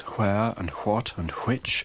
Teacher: she carefully says where and what and which with no glide cluster reduction